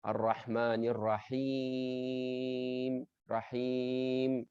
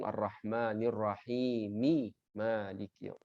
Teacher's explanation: mad arid lisukun artinya sukunnya itu adalah palsu, tidak asli. Kenapa terjadi sukun di situ? Karena waqaf.